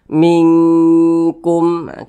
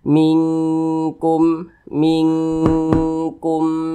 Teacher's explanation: sukun berjumpa dengan huruf Kaf hukumnya adalah ikhfa Hakiki ab'ad Nah maka cara membacanya disamarkan kemudian didengungkan karena dia ab'ad maka dia condong berbunyi Eng kita baca mingkumah kita tahan kita panjangkan sejenak karena kita dengungkan